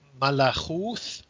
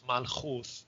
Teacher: So from Malakut, first went to Malachuth, shifting both the ka to a kha and the ta to a tha, and then dropping the vowel after the kha. So malachuth becomes malchuth.